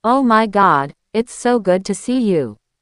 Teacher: In the USA, we tend to go very high on the stressed word. · Your voice should jump on, good. If you stay flat, it sounds fake.